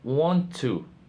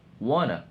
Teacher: The consonant is lost due to its position between vowels. This type of assimilation commonly appears in high frequency and expressions during informal interaction.